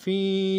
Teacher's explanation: وَرَأَيْتَ النَّاسَ يَدْخُلُونَ فِي، یا مدہ ہے، ایک الف مقدار میں کھینچنا ہے